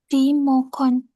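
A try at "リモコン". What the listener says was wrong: Ulangin satu napas. Yes, mesti pendek rinya ya. Remote.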